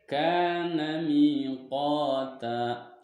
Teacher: Karena huruf kaf di sini berharokat fathah, bertemu alif dan setelahnya tidak bertemu hamzah. Maka cara membacanya huruf kaf dipanjangkan 2 harokat. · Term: mad asli